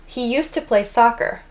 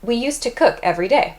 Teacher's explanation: when we're speaking quickly, or I suppose even not quickly, we tend to pronounce used to as use to.